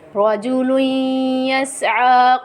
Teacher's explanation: را کو موٹا پڑھیں گے کیونکہ را کے اوپر زبر ہے، آگے پڑھیں گے رجل پہ غنہ کریں گے کیونکہ 2 زبر کی تنوین کے بعد حرف یا آ رہا ہے